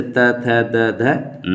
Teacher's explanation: जो वर्ड जीभ के ऊपरी नोक द्वारा ऊपर के दांतों को स्पर्श करने से उच्चारित होती हैं वे सभी दंत वर्ण कहलाते हैं। इसमें स्वर कोई नहीं है।